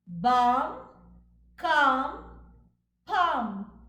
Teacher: After A, we have the consonant cluster LM. But please note, L is silent.